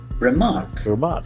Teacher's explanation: Here also we can see that the accent falls on the second syllable